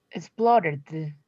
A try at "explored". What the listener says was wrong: Exactly, with D. So you say explored.